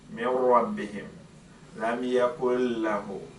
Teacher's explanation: So you don't hear the n sound, it goes completely. That is the reason why another name for al-idgham bi ghunna is al-idgham al-naqis.